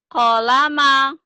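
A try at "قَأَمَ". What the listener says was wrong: Bukan Bu, ini koama Bu. Koama ini alif Bu. Koama, yakin Bu ini alif? Iya bener. Jadi kalau di alif pasti nggak nyambung.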